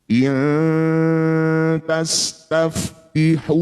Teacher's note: In ta nun sukun bertemu ta dal atau th disebut bacaan namanya ikhfa aqrab. Bunyi nun dengungkan dua harakat.